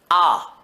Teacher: दीर्घ आ आएगा। क्योंकि जब हम आ बोलते हैं तो मुख पूरा खुल जाता है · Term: विवृत स्वर